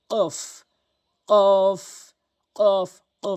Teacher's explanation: এখানে কফের জায়গায় কফ উচ্চারণ করতে হবে। কফটি হচ্ছে জিহ্বার গোড়া উপরের তালুর সঙ্গে মিলিত করে উচ্চারণ হয়। কফ কফ কফ কফ ধাক্কা দিয়ে কফ।